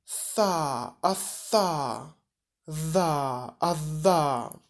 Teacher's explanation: Spółgłoski dentalne, zębowe, dental, na styku języka i zębów górnych.